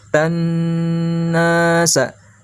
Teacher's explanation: ta-nya dimasukkan huruf nun lalu ditahan.